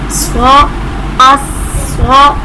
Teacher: اب حروف مستعلیہ میں سے صاد آ رہا ہے، اسے ہم پر کر کے پڑھیں گے.